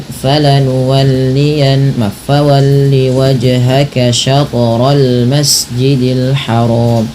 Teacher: wajhaka dan syatra pantulkan kedua-duanya karena ia bacaan qalqalah